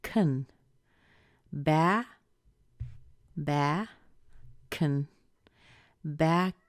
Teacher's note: we can push the k over into the vowel that's after it